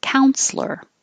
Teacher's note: we don't have to say the middle e like counselor it can be just two syllables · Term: 2 syllables